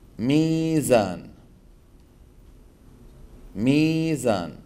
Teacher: تنطق تاتي لكن لا تنطق تقلبها العرب ياء تقلبها العرب ياء اذا كان عندك واو ساكنه وقبل مكسور تقلبها العرب ياء مثلا ميزان ميزان اصلها موزان لانها مشتقه من وزان فاذا هي